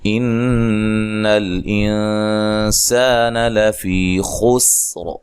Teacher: نون ساکن کا یہاں اخفا مع الغنہ ہے، باریک اخفا ہے. سین کو باریک سیٹی سے، اور یہ الف مدہ ہے.